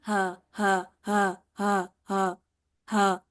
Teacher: आपको भी कोई किसी किस्म का जोर नहीं लगाना पड़ रहा सिर्फ सिंपल आवाज जो है ना वो हलक के पहले हिस्से यानी अक्स हलक से निकल रही है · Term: हमजा और हा